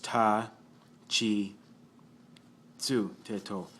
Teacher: Chi and tsu from the T column are a little bit different. They don't begin with T.